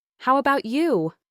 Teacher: Make sure to put a little stress on the word you here to clearly direct the question back to them.